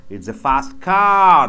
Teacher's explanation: it's a fast car the car should be stressed